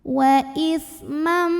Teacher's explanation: idgham bighunnah karena ada tanwin fathah bertemu dengan huruf mim maka tanwin fathah yang biasanya bunyinya n is man kalau ketemu mim jadi ismam dan ditahan bunyi m nya didengungkan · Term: idgham bi gunnah